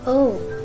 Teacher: rounder when you pronounce Oh it's O in American English but in case of British English it's more shorter and your lips would be nice rounder like oh